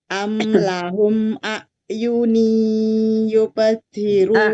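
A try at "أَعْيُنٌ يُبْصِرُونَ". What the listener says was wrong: Yunui. Bunda kurang terlalu jelas domah tainnya. Yunui.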